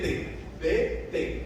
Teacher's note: Observe que a língua de vocês bate atrás dos dentes d t um vai vibrar e o outro vai vibrar menos